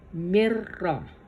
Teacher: تو اب اس کی کچھ ایگزامپل ہیں، جیسے میم کے نیچے کسرہ ہے اور نون پر سکون ہے اور را پر شدہ فتحہ کے ساتھ میں دیا ہے، تو اس کو کس طرح سے پڑھیں گے؟ مرہ، نون نہیں نکالا جائے گا اور میم کو را کے ساتھ ملا دیا جائے گا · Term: بغیر غنہ